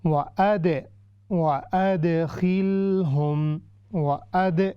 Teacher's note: وَأَدْ یہ ہے قلقلہ، چونکہ دال ہے اور یہ قلقلہ باریک قلقلہ ہے